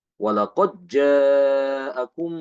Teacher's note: membaca dengan mengidghamkan Dal ke Jim walaqod jaakum ya qqolanya hilang kalau diidqamkan berarti qalqolahnya hilang